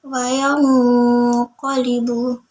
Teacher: qaf dan kaf itu makhraj hurufnya di pangkal lidah, jauh dengan nun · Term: ikhfa ab'ad